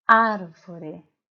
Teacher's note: pronunciando as sílabas árvore na sílaba ar é mais forte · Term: sílaba tônica